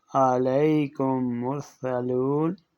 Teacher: پہلے میم کو دوسرے میم میں ملا کر ایک مشدد میم کی طرح پڑھا جاتا ہے، جس کو ادغام کہتے ہیں۔